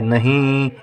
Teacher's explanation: यानी कि कुछ कुछ नाक से आवाज आ रही है